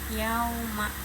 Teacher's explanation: ya berbaris fathah bertemu dengan waw sukun adalah harfulin atau huruf lin, dibaca dengan lembut